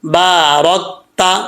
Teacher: را کے اوپر زبر ہے، اس کو پر پڑھا جائے گا یعنی موٹا پڑھا جائے گا